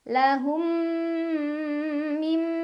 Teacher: Cara bacanya mim pertama dileburkan ke huruf mim kedua sambil berdengung. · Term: idgham mimi